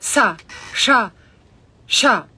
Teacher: They're mahaprana, means big breath, and you have a puff in your solar plexus. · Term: sibilants